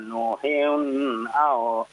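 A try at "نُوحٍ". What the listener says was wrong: Coba Pak, ketika izhar, ya, nuhin jangan terlalu dipanjangkan, ya.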